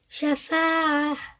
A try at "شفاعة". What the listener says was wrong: No, you're not stopping. شفاعة.